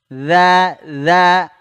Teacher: ujung lidah menyentuh ujung dua gigi seri atas sedikit digigit ujung lidahnya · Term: huruf dalal, huruf dzal